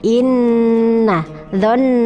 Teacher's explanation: Gunnah itu ada 2 hurufnya, nun tasdid dan mim tasdid. Nun tasdid dan mim tasdid dibacanya 1,5 alif atau 3 harokat, jadi ditahan dulu sebentar.